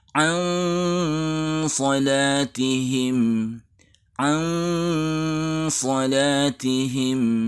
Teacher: Ikhfa yang bertemu sad ini memang agak mirip eng, karena memang sad adalah huruf yang tebal, huruf isti'la. Jadi suara menggema di dalam mulut dengan mengangkat pangkal lidah.